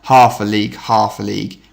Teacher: It goes from stressed to unstressed, back to stressed to unstressed. For me, this echoes the sounds of the horses rushing into battle, because a horse gallop goes quite stressed, unstressed, stressed, unstressed. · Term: dactylic rhythm